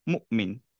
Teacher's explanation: হামজার একটা সিফাত হচ্ছে যে এটা সিদ্ধা মিনস হচ্ছে এটা খুব ফাস্ট স্টপ করতে হবে সো আমরা এটাকে পড়বো এভাবে মুমিন ফাস্ট স্টপ করলাম আবার যখন